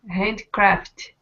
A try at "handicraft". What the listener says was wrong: Yeah, but you're still eating the E. I want to hear the E. Handy.